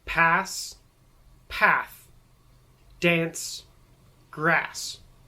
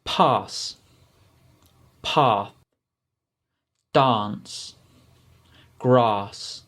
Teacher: The American A is a much shorter sound, and it's much more how you would imagine an A to sound, an A sound. But in the British English, it's a much longer sound, and it makes it almost sound like you're trying to say the letter R.